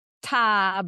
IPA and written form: ta (TIE)